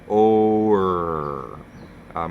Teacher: It's really a combination of the O vowel and the ER vowel-like R sound. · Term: OR sound